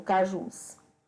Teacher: a última sílaba de cajus é a tônica, é a mais forte. Ela é classificada como oxítona.